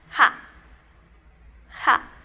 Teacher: junto a la vocal A, también una consonante que es aspirada, va a ser la composición de la sílaba ja, ja.